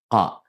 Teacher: It's a deep Ka sound from the back of the mouth.